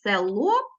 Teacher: ми показуємо що е звучить нечітко А у вимові наближається до і тобто показуємо призвук який має ненаголошений звук Ось такі основні правила · у нас е ненаголошене так І ми його чуємо нечітко ми позначаємо буквою е а зверху пишемо маленьку букву І таким